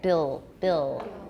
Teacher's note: My tongue may not be touching in front. No alveolar contact. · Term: dark L